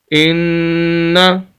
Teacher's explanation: حمزہ زیر نون ان، نون زبر نا، ان، حمزہ کو نون کے ساتھ اس کو حمزہ پڑھنا ہے، الف نہیں پڑھنا